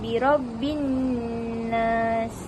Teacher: Jadi cara bacaan alif tu alif lam tu tidak dibaca, jadi dari B terus tekan ke nun. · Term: alif lam syamsiah